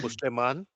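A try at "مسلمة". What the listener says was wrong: but you're still saying na in the end, Musliman. still saying it. Kick the noon out. So get rid of noon. Just get rid of the noon. It's a lighter form. Muslima. The pronunciation of Muslima is a short ending pronoun, Muslima.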